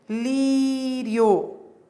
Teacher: a semivogal, que é o som mais fraco, vem antes da vogal, que é o som mais forte. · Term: Ditongo crescente